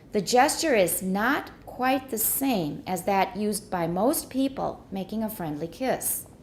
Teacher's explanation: Not is stressed because it's a negative.